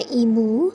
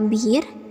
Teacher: Sedangkan I pada silabel-silabel berkoda atau suku kata tertutup direalisasikan dengan huruf I besar